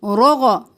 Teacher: را موٹا، غین موٹا اور حرکات ہیں جلدی سے